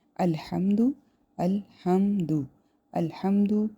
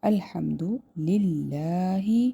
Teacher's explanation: الحمد اظہار ہوگا، میم ساکن کے بعد دال ہے